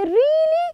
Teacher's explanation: someone tell you a great news you say really you raise your tone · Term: rising